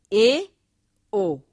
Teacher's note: जब संवृत की अपेक्षा मुख विवर के ऊपरी भाग के बीच दूरी थोड़ी अधिक रहती है तो अर्ध संवृत ध्वनियां उत्पन्न होती